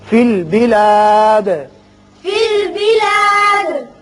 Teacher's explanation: دال پر قلقلہ کریں گے اس لیے کہ یہ وقت کی وجہ سے ساکن ہو رہا ہے